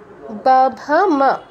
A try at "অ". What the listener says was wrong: আপনি অ এর উচ্চারণটা একটু ঠিক করবেন আপনার বাকিটা তো ঠিক আছে কিন্তু অ এর উচ্চারণ ঠিক না হলে হবে না